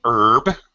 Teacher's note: I'm American I'm going to pronounce it without the H